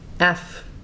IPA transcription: æfː